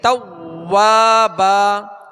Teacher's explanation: ان تمام باتوں کا خیال رکھتے ہوئے جیسے انہو کان توابا تو واو پر تشدید ہے، توابا واو کے آگے الف مدہ ایک الف کی مقدار کھینچیں گے